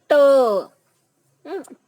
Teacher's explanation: काही दंत्य, काही तालव्य असतात, म्हणजे जीभ टाळूला चिकटते. ट, ट म्हणताना जीभ थोडीशी टाळूला चिकटलेली असते.